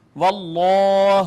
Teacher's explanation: جلالت کا ما قبل مفتوح، لہٰذا یہ مفخم پڑھا جائے گا